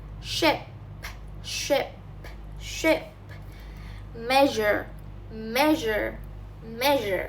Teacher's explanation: These are post-alveolar fricates.